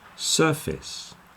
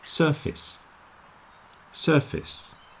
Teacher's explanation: that second part is the same as face but you'll notice we put a lot of stress on the sir so the face part gets contracted down and it becomes more like fist